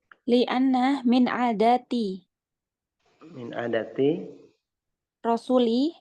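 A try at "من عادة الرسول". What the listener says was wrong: Min adatir rasuli, disambung aja ya kalau mudhof ilaih.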